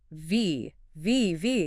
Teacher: Teeth on lip. And then you push air through, but you engage your vocal cords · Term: voiced